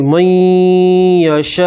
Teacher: نون سکین کا یا کے اندر ادغام کریں گے اور ایک الف کے برابر گنہ کریں گے. یہ نون کو نہیں پڑھیں گے, میم کو سیدھا یا سے ملائیں گے.